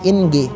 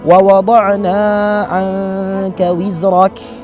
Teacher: Seakan-akan kita masih mengucapkan huruf nun, namun lidah kita udah mendekati huruf selanjutnya, yang di sini adalah huruf kaf. Ya. Jadi cara mengucapkannya adalah wa wada'na 'anka wizrak. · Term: ikhfa